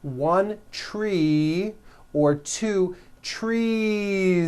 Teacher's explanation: you continue the voicing throughout the whole word and add on a voiced Z.